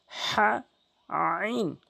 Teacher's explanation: 29টি হরফের ভিতরে দুইটি হরফ হলকের মাঝখান থেকে উচ্চারণ হয়। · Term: হা আরেকটি হচ্ছে আইন